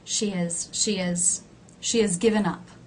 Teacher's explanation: do you see how the word has is very low in pitch it's actually been reduced and I have dropped the h